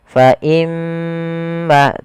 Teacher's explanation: kita hukumi dengan bacaan gunah cara membacanya adalah menahan suara gunahnya